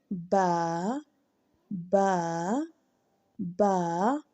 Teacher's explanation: बा अदा करते वक्त दोनों होंठों का अंदरूनी तरी वाला हिस्सा जब मिलता है तो बा अदा होता है · ہونٹوں کا اندرونی تری والا حصہ جب ملتا ہے تو با ادا ہوتا ہے. اور اگر آپ کو ایسے بھی سمجھ نہیں آ رہا تو پیچھے الف لگا کر پڑھنے کی کوشش کریں. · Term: باریک